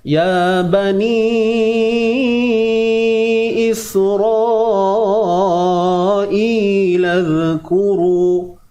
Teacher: Ya 2 harakat mad asli, ba 1 harakat sahaja.